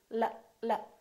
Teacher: what's your tongue doing it's going up and down right behind your upper teeth